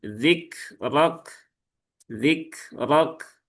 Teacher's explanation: R-nya tebal lah kafnya munculkan lagi syiddah dan hamsnya ketika dia dalam kondisi sukun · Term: kaf sukun